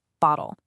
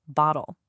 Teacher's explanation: In the UK, you really hear that sharp T sound in the middle, bottle. But for a lot of people in North America, that T softens. It almost melts into more of a D sound, bottle. It's the same word, same idea, but it feels just a little different on the tongue.